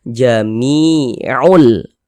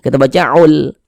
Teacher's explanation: bunyi tanwinnya kita masukkan ke huruf lam.